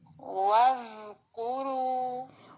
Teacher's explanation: زال نرمی سے زبان کی نوک باہر نکالیں گے، اگر یہ اندر رہی تو پھر تو وز پڑا جائے گا.